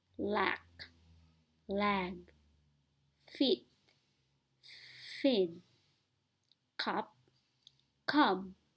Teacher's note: all the final stops are not aspirated and thus they sound very similar if not the same